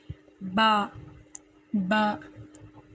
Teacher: होंठों को आपस में मस करने से बा अदा होता है।